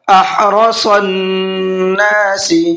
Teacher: حا کو حلق سے نکالنا ہے اور را کو منہ بھر کے پڑھنا ہے، صاد کو بھی منہ بھر کے پڑھنا ہے۔ صن، نون کے اوپر تشدید ہے، یہاں پر بھی غنہ کریں گے۔